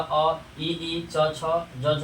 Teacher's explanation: अ ई च छ ज झ का उच्चारण होता है आपको तालु से, उसे तालव्य वर्ण कहते हैं